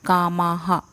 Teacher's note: माँ के बाद विसर्ग है तो आ है, तो इसलिए हा ही उच्चारण रहेगा, ह नहीं रहेगा।